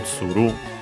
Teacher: Accent on the last syllable, tsuru.